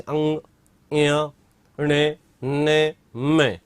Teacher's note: इनके उच्चारण में नासिका का प्रयोग ज्यादा होता है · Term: नासिक्य